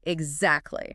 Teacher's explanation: Remember to stop that T.